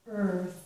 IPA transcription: θɜɹ